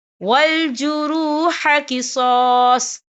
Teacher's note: وقف کی صورت میں صاد ساکن ہوگا